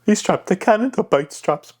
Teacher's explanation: it's a hushed tone, but it's a high pitch, right? High frequency.